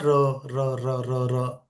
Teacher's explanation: लुंठित वो होता है जिसमें जीभ को ना दो एक बार घुमाना पड़ता है। प्रकंपी कंपन हो रहा है वहां पे। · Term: लुंठित व्यंजन